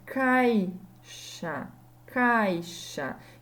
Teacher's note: esse ai que ficou junto na mesma sílaba é um ditongo